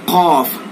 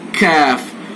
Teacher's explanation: पीछे को जाएंगे कौफ, आगे को आएंगे कैफ